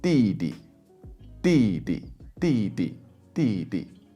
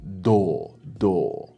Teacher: The D in Chinese is more like the T in store. It's more like a T sound. Whereas in English, it's a heavier voiced sound.